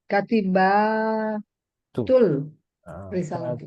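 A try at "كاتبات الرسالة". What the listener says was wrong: Katibatur risalati. Ada panjangnya di belakang dan taknya harus dibuka.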